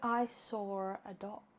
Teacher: when you have a word that ends in a vowel sound like saw, that's followed by a word that begins with a vowel sound like a. And so our brains feel compelled to stick an R in between the two words so that the transition from one to the other feels a bit more fluid.